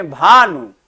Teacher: कोई दबाव नहीं, कोई बलाघात नहीं पड़ रहा है वर्ण पर